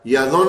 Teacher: نون جو ہے وہ 2 دفعہ پڑھا جائے گا، ایک دفعہ نون ساکن کا اور دوسرا جو نون پیش والا ساکن بن رہا ہے، تو اس لیے اس کو غنہ بھی کریں گے اور یظن ایسے کر کے پڑھیں گے۔